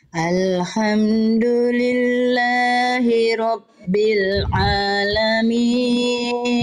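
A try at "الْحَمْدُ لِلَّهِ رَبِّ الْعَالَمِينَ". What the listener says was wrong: Bagus, tapi jangan bil kasroh. Tengah lidah diangkat, vokal i-nya jelas. Alhamdulillahi rabbil alamin.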